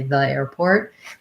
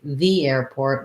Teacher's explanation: the rule is to say the airport with the e sound because airport starts with a vowel sound